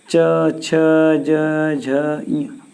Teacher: जब भी हम च बोलेंगे तो हमारे जो मुख में ऊपर तालू बना हुआ है हमारी जीवा वहां जाकर के स्पर्श करती है